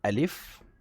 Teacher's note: makhraj Alif terletak di bagian krongkong sebelah bawah sekali